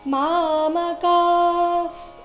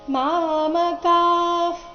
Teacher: ಕದ ನಂತರ ಇರೋ ವಿಸರ್ಗದ ಉಚ್ಚಾರಣೆ ಅರ್ಧ ಫ ರೀತಿ ಬರಬೇಕು